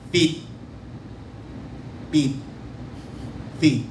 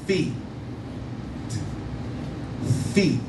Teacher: the top lip stays up, the front teeth touches the bottom lip, and you aspire, let the air out